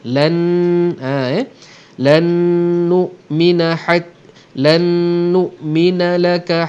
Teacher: Ya Musa, lan, nun mati berjumpa dengan nun, nun mati jumpa nun, hukum dia idgham ma'al gunnah, maka yang dibunyikan ialah nun. Kebetulan nun kedua tu diberikan tanda sabdu, maka dengunglah 2 harakat.